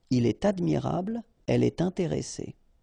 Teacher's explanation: in all these cases, you should make the liaison, and in that case, it's with T.